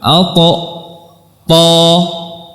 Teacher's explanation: huruf-huruf ini th dal dan ta dari ujung lidah bertemu dengan pangkal gigi seri atas bukan dari langit-langit